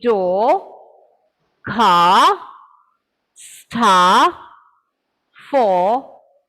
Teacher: whenever a word ends with an r sound we do not pronounce the r